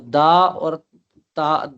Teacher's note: تو ثنایا علیہ کی جڑ یعنی سامنے کے جو 2 دانت ہیں اوپر والے، وہ ثنایا علیہ کہلاتے ہیں۔ جب ہم تا پڑھیں گے تو تا پڑھتے وقت زبان کی نوک ثنایا علیہ کی جڑ کے ساتھ لگے گی تو تا ادا ہوگا